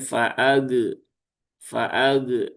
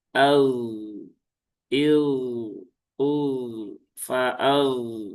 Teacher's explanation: faag ya itu jelas tidak sesuai dengan sifat dari huruf gin. Huruf gin itu salah satu sifatnya adalah rakhawah ya atau mengalir.